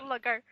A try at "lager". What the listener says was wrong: You speak wrong. Sorry, Lugger. Apparently, A is now pronounced with a U.